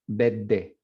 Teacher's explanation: It's almost like a double D, or like a geminated D.